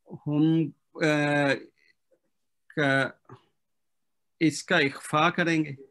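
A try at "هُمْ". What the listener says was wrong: نہیں اظہار ہوگا، ہاں، میم ساکن کا اخفا کب ہوتا ہے؟ جب آگے با ہو.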